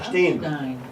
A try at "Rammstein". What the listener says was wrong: It's not Steen. You fucking fuck. Don't tell me how to pronounce my language.